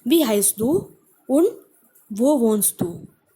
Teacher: It goes down to show that question is over.